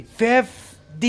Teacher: You have to put the stress on FIF.